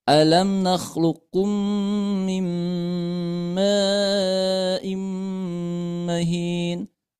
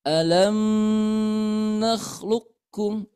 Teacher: Mim sukunnya dijelaskan, tidak boleh terlalu lama menahan dengungannya. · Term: izhar syafawi